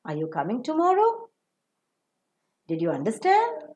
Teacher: the yes no type of sentences will receive the rising tone